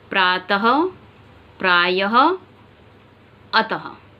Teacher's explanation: चिन्ह जहां पर है वहां पर हां की आवाज आ रही है